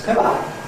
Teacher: ‘pillow’ [ˈpɪləʊ] and ‘pillar’ [ˈpɪlə] can become identical for Londoners, [ˈpɪlə]. They’re pronounced the same.